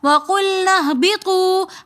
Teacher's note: وَقُلْنَا اهْبِطُوا کے اندر بھی واو مدہ ہے تو اس لیے ہم نے پڑھا وَقُلْنَا اهْبِطُوا, ہم نے اس کو کھینچ کر پڑھا